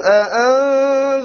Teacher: Two hamzas so close to one another. Notice how he will do it with crisp, clear two hamzas.